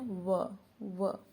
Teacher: अगला है दंतोष्ठ वर्ण, वकारस्था दंतोष्ठम, इसके लिए सूत्र प्रयोग हुआ है। व का उच्चारण स्थान दंत और ओष्ठ है। दांत और ओष्ठ मिल बोल के देखते हैं व।